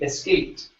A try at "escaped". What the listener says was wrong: Good. One more time. Add the es at the beginning.